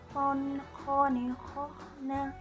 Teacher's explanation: Kemudian selanjutnya adalah huruf kho. Huruf kho dikeluarkan dari tenggorokan yang paling dekat dengan rongga mulut, sehingga ciri khasnya adalah suaranya mirip dengan suara mendengkur.